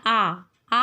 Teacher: दूसरा होता है जब हमारा मुंह सबसे अधिक खुला हुआ हो, विवृत, उसको कहते हैं विवृत, जिसमें आ में हमारा मुंह पूरा खुला रहता है